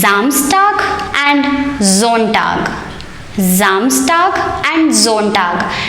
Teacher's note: If you see any of the English vowels, that is A, E, I, O and U, written after the letter S, A, E, I, O, U, following the letter S, the pronunciation of that S should never be like S. It will always be like Z.